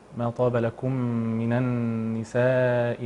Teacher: ايضا الغنه هنا مقدار حركتان